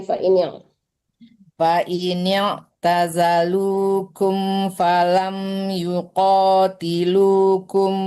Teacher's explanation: Mim ketemu fa tidak dengung. Kalau nun yang mati ketemu fa dengung. Tapi kalau mim tidak ya.